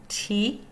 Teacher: Tongue tip is touching ridge behind teeth, stops airflow and releases it through mouth.